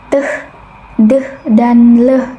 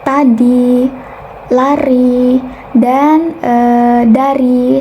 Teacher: Nah, apiko ini merupakan bagian daun lidah, bagian ujung lidah, dan alveolar itu merupakan bagian gusi atas. Nah, bunyi yang dihasilkan atau cara artikulasi yang dihasilkan itu ketika bagian ujung lidah itu menyentuh bagian gusi atas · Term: apiko alveolar